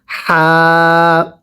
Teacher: এই হাটা উচ্চারণের সময় গলার মাঝখান থেকে বাতাস বের হবে